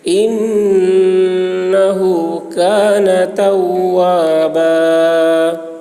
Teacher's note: انہو میں غنہ ہوگا. انہو آواز کو گنگنائیں گے